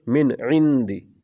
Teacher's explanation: نون کی واضح آواز آنی چاہیے، اس کو کہتے ہیں اظہار